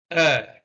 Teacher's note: central vowel sounds and the first one we have here is the schwa uh articulated from a resting position it is the most frequently occurring unstressed vowel sound in english it is unstressed you don't stress it at all that's what